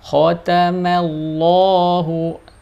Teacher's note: ada huruf lamnya dibaca tebal ya karena sebelumnya ada huruf mim berharakat fathah jadi wajib dibaca tebal khotamallahu namun mimnya harus tipis ya khotamallahu